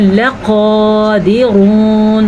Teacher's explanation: را کو پر پڑھنا ہے اور قاف کو بھی پر پڑھنا ہے۔